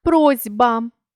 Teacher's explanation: у слові просьба глухий с уподібнився до дзвінкого з під впливом сусіднього дзвінкого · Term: уподібнення за дзвінкістю